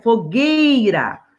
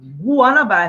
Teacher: Quando eu pronuncio fogueira, eu não estou ouvindo o som do U, eu estou ouvindo o G e do I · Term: dígrafo